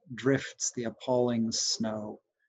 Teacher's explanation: I'd put one on the first syllable on drifts, and then on the second syllable of appalling, pall, and then one on snow.